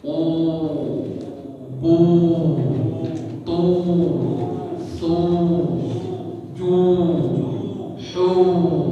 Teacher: Kita memanjangkan suara itu jauhiyah. Rongga kita terbuka, rongga hidung kita, rongga mulut kita ya. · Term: waw maddiyah